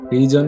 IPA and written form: ˈriː.zən (reason)